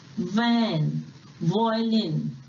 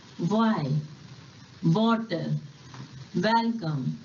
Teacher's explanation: जब हम इंग्लिश में व बोलते हैं तो अपर टीथ लोअर लिप को बाइट करता है, जैसे कि वैन, वॉयलिन, एटसेट्रा। और W को बोलते समय हमारे लिप्स राउंड होते हैं